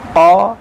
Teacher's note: یہ قاف جو ہے حروف مشتعلیہ کہا جاتا ہے اس کو تجوید کی زبان میں، تو اس کو موٹا کر کے پڑھیں گے